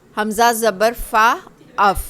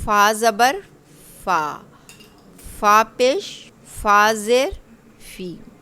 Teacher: आपने देखा हमारे दांत एग्जैक्ट जो इसका मखरिज था, यानी कि नीचे वाले होंठ का जो अंदर का तर हिस्सा है, वहाँ जाकर हमारे ऊपर वाले जो 2 दांत हैं वो लगेंगे।